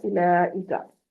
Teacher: बाज बाज कुरान पाक में वाव साइलेंट होती हैं, उनके ऊपर कुछ भी नहीं होता, पीछे पेश होती है, तो वो वाव साइलेंट होती है, उसको मद करके नहीं पढ़ा जाता